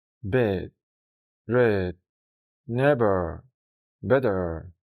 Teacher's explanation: se reproduce como el sonido de la letra E del español, pero más abierta, es decir, como si dijeras la E, pero dejando la boca un poco más abierta y la lengua ligeramente más baja.